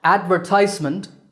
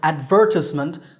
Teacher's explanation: advertisement, stress on the third syllable, ties, and advertisement, stress on second syllable, ver